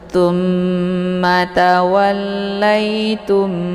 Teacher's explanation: lain kalimat maka ini dinamakan dengan Idam mimi ya cara bacanya mimnya dimasukkan ke dalam mim yang bertasdid jadi sudah jelas ini dibaca dengung ya ya ditekan kemudian ditahan sambil terbent untuk suara yang mendengung